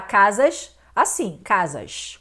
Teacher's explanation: Então aqui nós temos um alofone do fonema S, que se torna aqui o Sh, que também é surdo, tanto o S quanto o Sh é surdo, então nós não temos aqui uma influência do meio. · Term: chiando